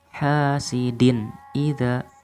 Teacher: tanwin ketemu dengan Hamzah aku membaca hukum bacaannya adalah izhar halqi harus kita baca dengan jelas